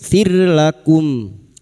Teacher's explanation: ra sukun yang didahului kasrah dibaca tarkik atau tipis